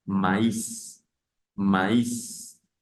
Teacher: yo separo el sonido de la A y de la I, que normalmente suenan E, pero en este caso sonarían separados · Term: trema